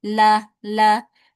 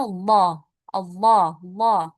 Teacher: kalau tipis berarti lafaz Allahnya dibaca lah, ya seperti huruf lam biasa. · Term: tarqiq atau tipis